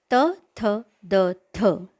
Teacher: इनका उच्चारण करते समय जिह्वा दांत को स्पर्श करती है, ऐसा अनुभव हम सबको आता है, इसलिए इन वर्णों को दंत्याः कहा जाता है।